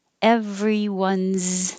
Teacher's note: everyone's that s is now a z